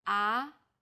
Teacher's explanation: the second tone starts with a middle pitch then Rises quickly